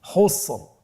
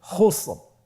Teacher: তাহলে র সাকিন ওয়াকফের কারণে সাকিন, তার পূর্বে আরেকটি সাকিন রয়েছে এবং তার পূর্বে রয়েছে পেশ। তাহলে আমরা র সাকিনটাকে পোর করে পড়ব।